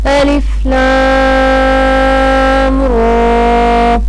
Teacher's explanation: را کے اوپر کھڑی زبر ہے، اس لیے ہم اس کو 1 الف کے برابر لمبا کریں گے